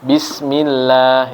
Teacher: kalau sebelumnya kasrah maka dia tipis lamnya